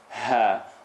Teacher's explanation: Ha, first part of the throat.